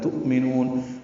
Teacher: حمزہ ساکن جھٹکے سے ادا ہوگا، میم کو جلدی پڑھیں گے، نون میں نو کو لمبا کریں گے، اور دوسری نون پر اظہار ہوگا.